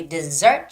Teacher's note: the stress goes on the second E